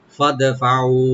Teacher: ফা ওপেন রাখবেন, দালটাকে একটু কলকলা করতে হবে এখানে। ফাদে ফাউ, ফা ওপেন রেখে ও এখানে 3 আলিফ টানবেন মাদ্দে মুনফাসিল। ফাদফাউ ওদেরকে দিয়ে দাও, পে করো।